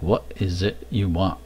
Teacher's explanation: there's a tendency to uh swallow that ending t